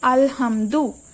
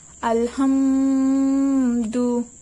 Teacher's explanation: মিন সাকিনের বামে ইজহারে খাজের হরফ আসিলে গুন্নাহ ছাড়া স্পষ্ট করে পড়তে হয়।